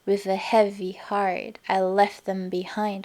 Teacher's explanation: so there are 10 syllables and they go quick quick slow slow slow quick quick quick slow slow